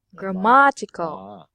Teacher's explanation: the stress must be on the second syllable